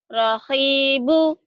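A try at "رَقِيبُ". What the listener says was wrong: Bukan hi, tapi qi. Raqibu.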